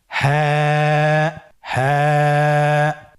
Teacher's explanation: হা হরফটি উচ্চারণের ক্ষেত্রে অবশ্যই বারিক হবে এবং এক আলিফ টেনে পড়তে হবে। আপনারা আমার সাথে বলুন হাফটি উচ্চারণের স্থান কন্ঠনালীর শুরু হতে অথবা আমরা যদি আরবিতে বলি হলকের শুরু হতে এটা এই হরফটি উচ্চারিত হয়।